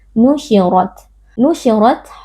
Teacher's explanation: kita baca dengan mengangkat pangkal lidah nusyirot huruf RO di sini kita baca dengan tafkhim atau dengan tebal karena ro berharakat fathah Jadi angkat pangkal lidahnya